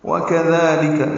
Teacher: اس میں سارے حروف باریک ہیں، دال کو 2 حرکات لمبا بھی کرنا ہے